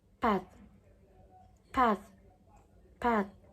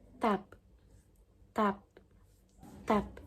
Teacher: at the beginning of the word it is pronounced with a strong puff of air like path path path but when it is at the end of the word it is pronounced without being aspirated like tap tap tap